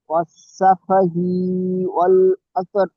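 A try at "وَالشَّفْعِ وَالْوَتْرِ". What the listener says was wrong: ই টান হবে না, ওয়াশ-শাফিঈ ওয়াল ওয়াতর।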